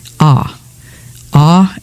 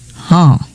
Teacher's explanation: same letter as the root of the verb to see but it's not nasalized